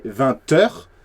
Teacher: Here you have to say a T, 20 heures, because there is a T at the end of 20, and you have to do the liaison